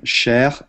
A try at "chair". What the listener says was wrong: when we say if it's French you might say sh but in English you say CH here